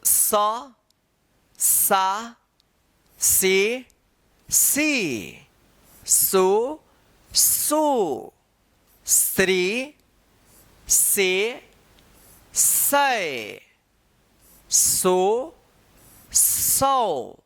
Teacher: अब देखिए यहां पे दंत स का, तो दंत स, दोनों दांत के बीच में जो जीभ आता है तब इसका उच्चारण होता है